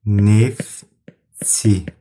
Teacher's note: Bax, görürsünüz, T səsi tələffüzdə düşəcəkdir